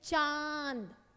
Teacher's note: साथ हवा बाहर आए उसको कहते हैं अनुनासिक शब्द जैसे चांद इसमें बोलने के वक्त हमारा मुंह भी खुलता है और नाक से आवाज आती है